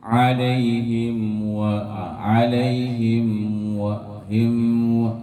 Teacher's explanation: Ada penahanan gunnah pada huruf mim ketika akan menyebutkan huruf waw. · Hati-hati dalam kesalahan izhar syafawi yang harus lebih izhar, harus lebih jelas ketika mim sukunnya bertemu dengan huruf waw